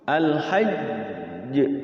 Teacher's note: Dal juga sama tuh. Kalau dia ada tasydidnya, dia ini kan ditekan dulu, ditahan dulu qalqalahnya.